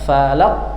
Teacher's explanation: Kalau qof pangkal lidah paling belakang dia. Falaq naik ke bagian langit-langit yang lunak belakang. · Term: qalqalah kubra